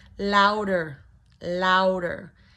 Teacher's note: So the word louder, low, low, ow, ow, diphthong, ow, jaw drops, ow, then the U, combination diphthong